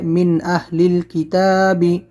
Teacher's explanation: من میں اظہار ہوگا، نون ساکن کے بعد حمزہ حلقی لیٹر ہے